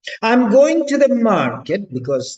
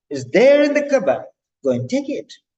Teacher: it's not flat tone. It's rising and falling tone.